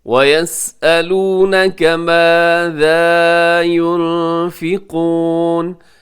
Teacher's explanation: نون ساکن ہے، نون ساکن کے بعد فا ہے، یہاں بھی اخفا کیجیے گا